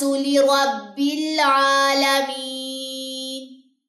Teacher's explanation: عین کے اوپر کھڑا زبر، 2 سیکنڈ لمبا ہوگا، یا مدہ 2 سیکنڈ لمبی ہوگی